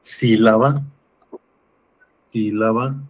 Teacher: tenemos la sílaba tónica en la antepenúltima, entonces también es esdrúcula.